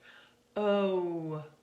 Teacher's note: It's almost like you start to make a W sound.